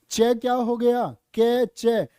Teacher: चै च होता आपका तालव्य। तालु से बोला जाएगा।